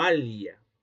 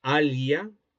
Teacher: Esa pronunciación completamente lateralizada